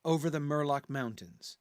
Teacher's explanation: the first half of the line is almost perfectly trochaic